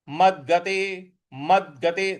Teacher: म के आगे जो द है इस पर हमको बल लगाना है